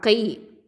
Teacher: காஃப் கெசரா கை. காஃப் அப்படிங்கிறது வந்து அக்கசல் லிசான் கீழ்நாவை எழுத்து, அடிநாவை எழுத்து